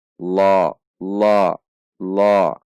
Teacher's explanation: Harokat berdiri pada huruf lam mat tabi'i, dua ketuk. Saat mengucapkan la juga tidak dengan membulatkan bibir, namun dengan mengangkat pangkal lidah, menegangkan pangkal lidah sehingga berbunyi seperti terdengar o.